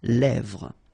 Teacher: this E accent grave here, it gives you the E, really open sound.